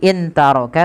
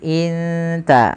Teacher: dimasukkan sehingga di sini teman-teman bacanya bukan lagi intaroka tapi Inta langsung samarkan kepada makhraj daripada huruf ta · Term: Ikhfa